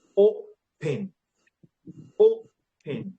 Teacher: O is high, then pen is low.